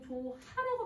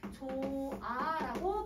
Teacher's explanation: 자 어간에 히읗이 와요. 그 다음에 모음으로 시작하는 어미나 접미사가 왔을 때, 접사가 왔을 때 이때 히읗이 탈락해버리는 거야. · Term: 히읗 탈락